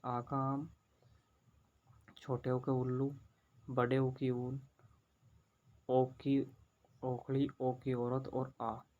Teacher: इस स्वरों के उच्चारण में जीभ के पिछले भाग का प्रयोग किया जाता है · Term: पार्श्व स्वर